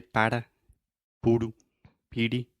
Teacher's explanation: your tongue is just touching the top of your mouth really, really fast, and it's just a quick little tap.